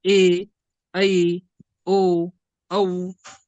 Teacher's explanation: संयुक्त स्वर म्हणजे दोन दोन स्वर एकत्र येऊन एक नवा स्वर तयार झालेला आहे उदाहरणार्थ ए ऐ ओ औ हे जे स्वर आहेत हे संयुक्त